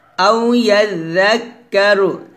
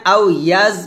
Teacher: يزكى তারপর আও ইয়াযাক্কারু এখানে আও ইয়াজ বলা যাবে না অর্থাৎ জাল যখন উচ্চারণ করবেন জিহ্বাটা উপরে দাঁতে আগে লাগাবেন নিচে লাগাবেন না